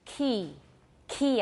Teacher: key key I have a lot of aspiration